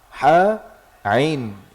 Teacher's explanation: Tengah kerongkongan, tengah tenggorokan, dekat dengan makhraj huruf ha. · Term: huruf ain